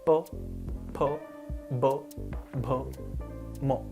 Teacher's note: Austha, meaning the lips, which is again easy to demonstrate. Your lips are touching when you say any of these consonants.